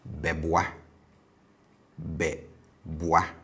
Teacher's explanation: So you notice the tone is low on the ingressive prefix.